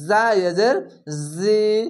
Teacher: এটি ঝিনঝিনা করে হবে আওয়াজ